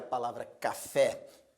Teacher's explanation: Observe que a palavra café é uma palavra oxítona por oxítona ela apresenta duas sílabas e a sílaba tônica é a última